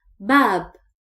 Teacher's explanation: The second word is babb. Bab we don't stretch the sound of ba here because there is no vowel.